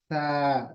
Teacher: गलत है सा प्लस अलिफ है तो इसको हम सिर्फ पढ़ेंगे सा ज्यादा नहीं सिर्फ दो हरकत खींच उससे ज्यादा नहीं